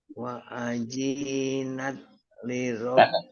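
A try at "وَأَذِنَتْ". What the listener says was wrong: Pendek. Wa adzinat. Tidak ada yang panjang.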